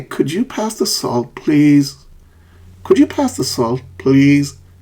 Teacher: salt falling and please Rising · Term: fall rise intonation, fall-rise intonation